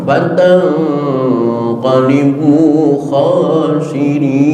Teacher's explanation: nun mati ketemu qaf ikhfa ba'ad, suaranya ang